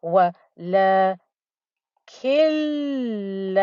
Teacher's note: It is followed by a lam with a shadda, so I will miss out this noon in pronunciation.